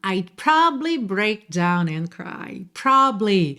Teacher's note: Muitas vezes essa sílaba do meio vai ser comida mesmo